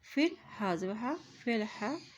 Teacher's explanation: فا کی زیر کو لام کے ساتھ ملاتے ہوئے پڑھیں گے کیونکہ لام کے اوپر جزم ہے